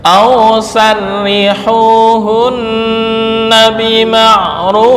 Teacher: Nah, ini kemarin hukum tarkik dan tafkhim pada ra. Ra berharokat kasrah dibaca tarkik.